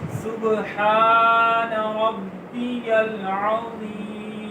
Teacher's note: سین نون کو لمبا نہیں کریں گے، ہاں کو ایک اتنا لمبا کریں گے کیونکہ اس کے اوپر کھڑی زبر ہے